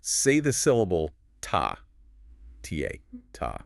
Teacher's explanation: The tip of my tongue is hitting the roof of my mouth just behind my front teeth. It's tapping it.